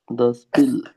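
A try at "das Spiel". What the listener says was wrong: मतलब श का साउंड आएगा, स्पील, या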